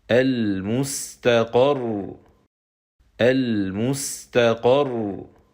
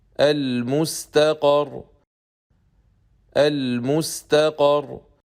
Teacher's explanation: we stop with Sukoon and Nabr, which is raising our voice on that mushaddad letter.